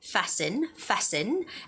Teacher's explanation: And the word fasten, you do not make the sound for the T.